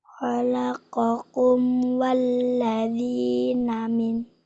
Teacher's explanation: Berarti jelas. Bacanya jelas. Nggak pakai dengung. Nggak pakai disamarkan.